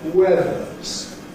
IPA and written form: ˈweðəz (weathers)